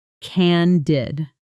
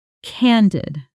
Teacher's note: Stress on the first syllable, short and clean.